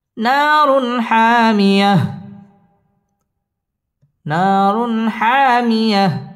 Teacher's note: তানবিনের বামে হা হা ইজহারে হরফ গুন্না ছাড়া স্পষ্ট করে পড়তে হবে